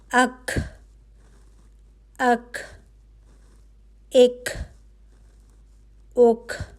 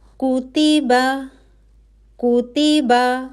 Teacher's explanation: ٹھیک ہے، تو کا کیا مخرج ہوگا کہ زبان کی جڑ کا وہ حصہ جو ق کے مخرج سے تھوڑا آگے ہے، جب اوپر اٹھے، ٹھیک ہے، آپ کی زبان کی جڑ اوپر اٹھے اور نرم تالو کے فوراً بعد والے سخت تالو کو لگے، تو حرف کا ادا ہوگا۔